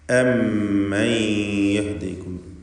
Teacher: മുശദ്ദദത്തായ മീം, അതിനുശേഷം സാക്കിനത്തായ നൂൻ ഒക്കെ മണിച്ചുകൊണ്ട് ഉച്ചരിക്കേണ്ട അക്ഷരങ്ങളാണ്. സാക്കിനത്തായ നൂനിനെ ഇദ്ഗാം ബിഗുന്ന ചെയ്ത് ശേഷമുള്ള യായിലേക്ക് ഭാഗികമായി ലയിപ്പിച്ച് മണിക്കണം.